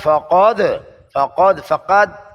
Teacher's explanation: زبان کی جڑ اور لہات، دال میں قلقلہ